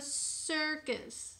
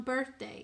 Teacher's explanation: See how R is changing the vowel sound of I? It's saying er now instead of a short I or a long I. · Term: R-controlled vowels